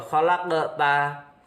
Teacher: ada qalqalah sugro, ada huruf qaf mati di tengah. Kemudian cara membacanya memantul